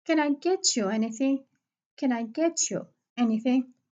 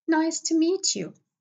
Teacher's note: A word ends in t and followed by a word that it starts with y. In this case, the t will be changed into ch.